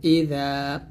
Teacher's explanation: জালটা পাতলা হবে জিহ্বার আগারটা উপর দাঁতের আগার সঙ্গে লাগাবেন